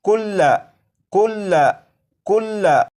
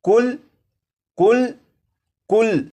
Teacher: जैसे यहाँ पर आप देखें, ये जो लफ्ज़ है बिस्मिल्लाहिर्रहमानिर्रहीम, ये लफ्ज़ लिखा है कुल्ला कुल्ला कुल्ला, लेकिन जब इस लफ्ज़ को वक्फ में पढ़ेंगे तो लाम के ऊपर जो ज़बर है इस ज़बर को नहीं पढ़ेंगे और ये लफ्ज़ पढ़ा जाएगा कुल कुल कुल।